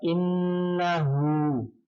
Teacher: innahu itu hunnah karena ada huruf nun yang bertasydid, ini tasydid ya, bersyaddah atau bertasydid.